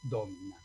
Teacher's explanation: En Domina, como la I es breve, el acento cae en la anterior, en la antepenúltima